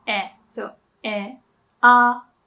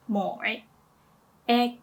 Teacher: for the a sound the mouth opens slightly more than e